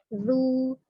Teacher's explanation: Jadi tidak begitu, tidak ditekan, tidak, tapi dia mengalir lembut saja za. Yang jelas ujung lidahnya itu menyentuh ujung gigi seri atas ya, itu secara makhrajnya. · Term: huruf zal